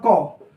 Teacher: क में अ भी आ रहा है, क भी आ रहा है परंतु पीछे से आ रहा है अ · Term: शहीद स्वर